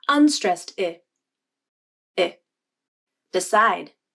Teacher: The unstressed I has a smaller jaw opening, in part because of the D sound that came just before the I vowel in the word decide. And the D sound and the I sound are made with the same amount of jaw opening.